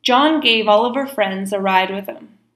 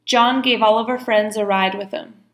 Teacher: a ride with them so notice all of her is Oliver we're cutting out the H ER sound